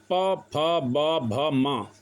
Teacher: प फ ब भ म व्यंजन होते हैं। ओष्ठ है क्योंकि इनको ओष्ठों के माध्यम से बोला जाता है।